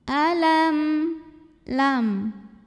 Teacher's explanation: Ada hukum idhar syafawi karena mim sukun menghadapi huruf yang bukan mim, bukan juga ba. Maka mim sukunnya dibaca dengan jelas bunyi M-nya.